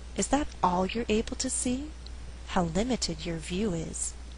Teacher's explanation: how limited your view is. I would emphasize the word all, because we're stressing the limitation, we're saying how little you see, how little the caterpillar sees.